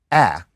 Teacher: linguists would talk about a low front vowel, and that is ah.